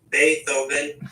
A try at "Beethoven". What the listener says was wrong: No, no, no. It's not a th It's a